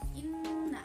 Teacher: Nun dan mim bertasydid itu biasanya dikatakan sebagai gunnah. Jadi nunnya itu ditekan